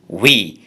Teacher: এই উই শব্দের দুটো উচ্চারণ, একটি হচ্ছে উপরে সেটা হচ্ছে স্ট্রং প্রনাউন্সিয়েশন, আর নিচেরটি হচ্ছে উইক প্রনাউন্সিয়েশন। স্ট্রং প্রনাউন্সিয়েশনে উই অর্থাৎ লং সাউন্ড, ইটা এখানে লং ই দেয়া আছে অর্থাৎ দীর্ঘ ই